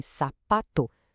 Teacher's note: se a força cai na penúltima sílaba, como em sapato, temos uma paroxítona. E olha, essa é de longe a classificação mais comum que a gente tem no português.